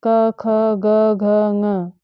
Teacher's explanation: पहला सूत्र है इसमें अकुह विसर्जनीयानाम कंठ। अ और क वर्ग में जितने भी वर्ण आते हैं क ख ग घ ङ, ह और विसर्ग, इन वर्णों का उच्चारण स्थान कंठ है। कंठ कहते हैं गला को।